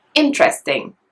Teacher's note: it's stressed on the first syllable. Interesting. Can you hear it? The first syllable is a bit stronger.